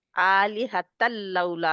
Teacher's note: हमने किया ना इदगाम गुन्ने के बगैर। हाँ जी, जहाँ पे गुन्ने के बगैर इदगाम है, ये देखो जी, इदगाम कामिल है ना, तो शद की भी जी, जरूरत नहीं पड़ी।